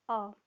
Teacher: सिर्फ एक ही ऐसा स्वर है जिसको बोलने में हमारी जीभ का मध्य भाग प्रयोग में आता है